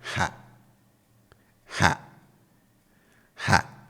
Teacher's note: So, as you can hear, I bring the tone down.